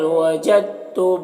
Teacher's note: فہل وجدتم، یہاں پر جیم کو تا سے ملا کر پڑھیں گے، دال کو نہیں پڑھیں گے، کیونکہ جزم والا حرف اور تشدید والا حرف جب ساتھ میں ہوتا ہے تو جزم والے حرف کو نہیں پڑھتے۔